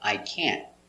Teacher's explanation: The t is a stop t. So you don't hear t. We don't say I can't.